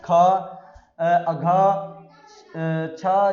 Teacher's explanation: महाप्राण व्यंजनों के उच्चारण से हकार जैसी ध्वनियां विशेष रूप से रहती है और श्वास में अधिक मात्रा में निकलती है